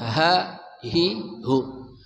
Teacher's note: Ha dari pangkal kerongkongan kita. Ha, hi, hu.